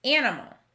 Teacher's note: a closed syllable the second syllable is another closed syllable m the last syllable l is a bit tricky because it has a sneaky schwa